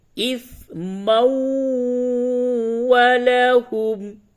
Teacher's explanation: اس جگہ پہ بھی تنوین کے بعد واو آ رہا ہے، ادغام مع الغنہ ہوگا